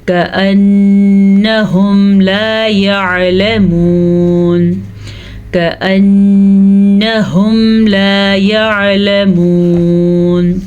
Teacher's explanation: نون کے اوپر شد ہے تو نون پہ غنہ کریں گے اور ہا کے تلفظ کا دھیان رکھیں گے۔